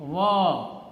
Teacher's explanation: Now please remember the difference between the, in the first line, the sixth symbol is va. Va is spoken with your upper teeth and lower lip